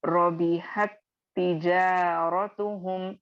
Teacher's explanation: साकिन वाला letter मुतहर्रिक letter में मर्ज होगा, जिसकी वजह से आप साकिन वाले ता यानी रबीहत के ता को नहीं पढ़ेंगे, तिजारतुहुम के ता को आप अदा करेंगे। ठीक है, और यहाँ पे आप एक और देखेंगे कि रबीहत तिजारतुहुम, शद्दा आएगा यहाँ पर, और आपको समझना है कि शद्दा में दो लेटर्स मौजूद होते हैं, एक साकिन वाला और एक मुतहर्रिक वाला। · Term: इदगाम सगीर